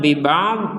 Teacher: Dod ini bukan qolqola jangan sampai dibaca biba'd